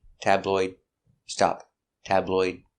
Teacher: if it's one tabloid use a stop D